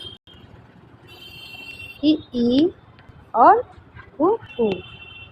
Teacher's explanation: जिन स्वरों के उच्चारण में मुंह सबसे कम खुलता है उन्हें क्या कहते हैं? संवृत। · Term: संवृत स्वर